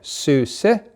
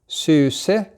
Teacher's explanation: This word had 2 syllables in it, so you notice that the tone went up on the end. Suse, low, high, suse.